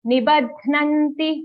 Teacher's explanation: Okay, the dha sound, nibad, but it's only a half dha and the dha is joined to na